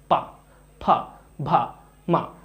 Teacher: ओष्ठ व्यंजन मतलब इनको बोलने में हमारे होठ टच होते हैं, पा, फा, भा, मा, मेरे होठों को आप देख भी रहे होगे, इनको बोलने में हमारे होठ टच हो रहे हैं।